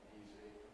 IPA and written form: ˈiːzi (easy)